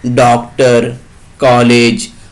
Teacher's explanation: यह अ तथा ओ के बीच की ध्वनि है। अंग्रेजी भाषा के शब्दों का शुद्ध उच्चारण करने के लिए इसका प्रयोग किया जाता है।